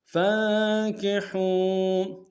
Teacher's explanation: فا کو نون ساکن کے ساتھ ملانا ہے، غنہ کریں گے، حا کو واو کے ساتھ ملانا ہے، واو مدہ ایک اعتدال میں کھینچیں گے۔